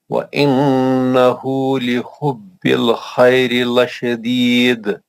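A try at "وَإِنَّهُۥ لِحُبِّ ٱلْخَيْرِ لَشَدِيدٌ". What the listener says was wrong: माशाल्लाह, बहुत अच्छा पढ़ा आपने।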